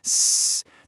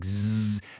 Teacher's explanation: For some sounds, what we call voiceless sounds like s, the folds are just held apart. The air just rushes right through, no problem. But for voiced sounds like zz, they're brought really close together. So, when the air pushes through, it forces them to vibrate, and that creates a buzzing sound. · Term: voicing